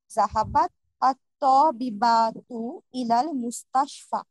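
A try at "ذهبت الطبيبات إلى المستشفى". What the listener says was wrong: আচ্ছা, জাহাবাত আর তবিবাতু, এটাকে একসাথে মিলিয়ে পড়লে জাহাবাতি ত তবিবাতু হয়। আপাতত শুধু এতটুকু বলি যে মূল ভার্বটা ঠিক আছে জাহাবাত, কিন্তু তায়ের নিচে একটা জেট দিয়ে ছান্দিক ভাবে মিলিয়ে পড়া হয় পরের শব্দটার সাথে।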